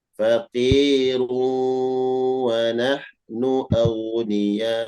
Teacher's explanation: Idgham biguna disertai dengan dengung.